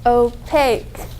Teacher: There are 2 syllables and the second syllable gets the accent.